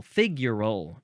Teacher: You got to emphasize the first syllable, figural, with an AL at the end.